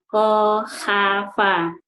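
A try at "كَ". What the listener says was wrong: Ka, bukan ha. Ulangin ka. Kakak. Jangan kha, tapi ini kak biasa. Kayak misalnya ngomong kakak.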